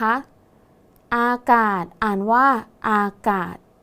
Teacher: ตัวสะกดคือศศาลาแต่ออกเสียงพยัญชนะท้ายเหมือนดเด็ก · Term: มาตราตัวสะกดแม่กด